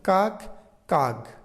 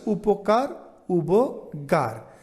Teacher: শব্দের মধ্যে বা অন্তে অঘোষ বর্ণ উঠে ঘোষ বর্ণ ব্যবহারের রীতি পাওয়া যায় তাহলে যেমন কাক কাক এখানে ক উঠে গ চলে আসছে এরপরের